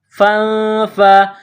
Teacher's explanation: اضْرِبْ بِعَصَاكَ الْحَجَرَ فَانفَجَرَتْ، فا کو نون کے ساتھ ملانا ہے، نون ساکن کے بعد فا ہے، حروف اخفا ہے تو یہاں آواز ناک میں چھپائیں گے، غنہ کریں گے